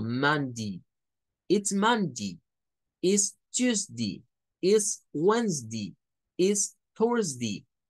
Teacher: Dependiendo de las zonas, y esto puede ser tanto en los Estados Unidos como en algunas zonas de Inglaterra, a veces para este caso específico, para los días de la semana, en algunos lugares tienen una mañita de pronunciar day como di, pero solo es para esto, no es para otras cosas.